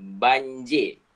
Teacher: J konsonan letupan langit keras